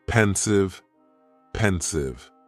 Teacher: Just 2 syllables, and the stress is on that first syllable.